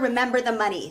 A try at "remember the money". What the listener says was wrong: Open your mouth more.